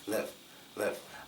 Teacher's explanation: live live it's not really going up it goes down and sometimes times people say it so fast you can barely even hear the eye sound